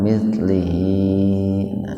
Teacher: Lam itu kan di kasroh hidup. Maka hi-nya itu menjadi mad silah qasirah, dibaca panjang dua ketukan.